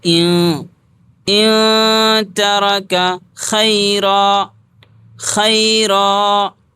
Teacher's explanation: تو نون کی آواز کو ناک میں چھپاتے ہیں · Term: حروف اخفا